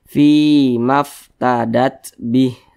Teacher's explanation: Fi dibaca panjang Mad Thobi'i panjangnya dua harakat